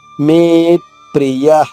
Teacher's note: మే పైన ఆఘాతం ఉంది, దీర్ఘంగా పలికిన తర్వాత మాత్రమే ఆఘాతం తీసుకోవాలి.